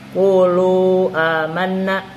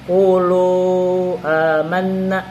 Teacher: Boleh dibaca 2 harakat, qulu amanna, atau dibaca 5 harakat, qulu amanna, gitu. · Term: mad jaiz munfasil